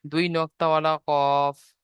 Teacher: 4 নম্বর মাখরাজ জিভের গোড়া এবং সেই বরাবর উপরে তালুর সাথে লাগিয়ে উচ্চারিত হয়